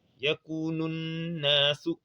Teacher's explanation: on réunit le nous avec na, avec shadda